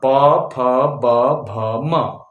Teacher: आखिरी वर्ग है, अंतिम वर्ग, प वर्ग। प वर्ग क्या है, ओष्ठ, यानी होंठ से बोला जाने वाला है